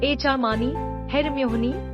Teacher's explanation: this name, popularized by the Harry Potter series, has 4 syllables with the stress on the second